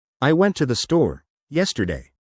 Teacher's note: You'd notice the stress on yesterday and the slight pauses before and after store. Try it with a little more emphasis on yesterday.